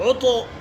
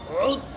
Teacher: تشدید کی آواز ہونا، قلقلہ نہیں ہونا